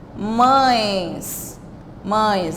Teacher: Percebam que eu tenho um som nasalizado